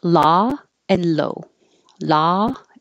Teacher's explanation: law your jaw is very open ah your lips are straight so you have to open more than you think